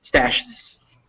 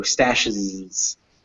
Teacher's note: It's just a little vowel sound, stashes. It barely even appears. It's just there to separate the sh and the z, so stashes.